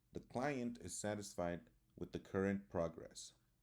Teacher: the next example is falling intonation you can use this for statements where the pitch of the voice Falls at the end of the sentence